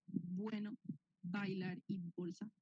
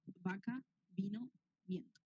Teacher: cuando pronuncia la B larga junta los labios mucho más y con la B corta apenas apenas como que junta los dientes